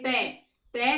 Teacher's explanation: मूर्धा के अंदर जीवा की जो हमारी आगे का भाग होता है मुड़कर पीछे की तरफ जाएगा, उसमें मोड़ आएगा, जिसका उच्चारण करते इसमें मुड़ेगी। जैसे टै, टै का उच्चारण करते समय हमारी जीवा की जो आगे की नोक मुड़ जाएगी और ऊपर लगेगी, मुड़कर अंदर की तरफ जाएगी, तो उसमें क्या होता है, मूर्धा।